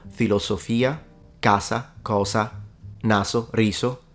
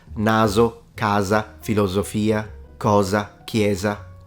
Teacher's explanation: vowels some Italian speakers will still keep it as a an alveolar fricative sibilant so s like in Sun